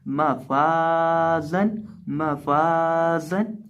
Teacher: जहाँ भी जिस भी लफ्ज़ के बाद अलिफ आ जाए लेकिन उसके ऊपर जज़म ना हो तो उसकी वजह से हम उसको खींच के पढ़ते हैं। और इसी तरह जा के अंदर हम सीटी की आवाज़ पैदा करके पढ़ेंगे। तो इसको हम पढ़ेंगे मफाजन, मफाजन, यानी फा को हम एक अलिफ के बराबर लंबा करके पढ़ेंगे।